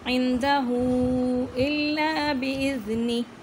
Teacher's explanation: عندہ مد ہے اور مد کے ساتھ الٹا پیش ہے، اس کو کھینچ کے پڑھنا ہے۔